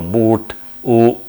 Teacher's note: like for example boot, U, where the tongue hump is at back